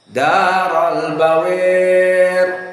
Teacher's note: Maka al-imalah al-kubra dia mendekati, dijatuhkan kepada kasroh. Kalau kasroh bawir misalnya, nah dia dijatuhkan dari bawar kepada bawir.